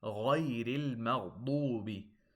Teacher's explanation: Make sure the ghain, the two ghains, and the dad are heavy.